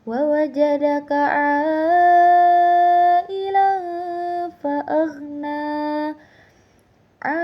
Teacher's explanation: Di situ terdapat alif panjang yang bertemu dengan huruf hamzah pada satu kalimat. Hukum bacaannya yaitu mad wajib muttasil. Dibaca 4 sampai 5 harakat.